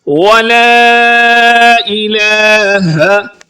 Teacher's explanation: ولا کو لمبا کریں گے کیونکہ اس پر ایک مد ہے جس کا نام مد منفصل ہے